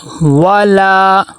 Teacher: لام کے آگے الف مدہ آ گیا، ایک الف کے برابر لمبا کریں گے